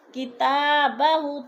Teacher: تا کو بھی کھینچنا ہے، کھڑی زبر ہے